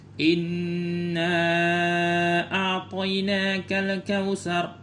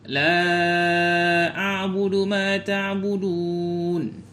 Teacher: Jadi mad jaiz itu dibaca 4 atau 5 harakah.